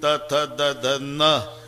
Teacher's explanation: नळ्याचा न उच्चारा तर जीभ दाताला स्पर्श करणार बानाचा न उच्चारा अजिबात दाताला लागत नाही टाळूला इतक जवळ जवळच